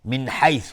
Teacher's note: نون ساکن بهش های جیمی اظهار حلقی